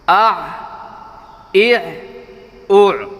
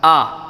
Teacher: حمزہ اور عین میں یہ فرق ہے کہ عین کی آواز حلق سے ادا ہوتی ہے، عین کہہ کے نکالتے ہیں، اور الف کی آواز ذرا باہر سے ادا ہوتی ہے